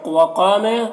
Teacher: قاف کو پر پڑھیں گے، یہ حروف مستعلیہ میں سے ہے اور الف مدہ ہے اس میں، تو ایک الف کے برابر کھینچیں گے، اور جن حروف میں زبر زیر پیش ہے اسے جلدی پڑھنا ہے۔